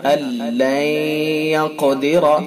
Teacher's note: یہ نون ساکن ہے اور اس کے بعد یا و میم نون میں سے یا ہے، تو لہذا اس کے اندر ادغام ناقص ہے اور اس کے اندر غنہ ہوتا ہے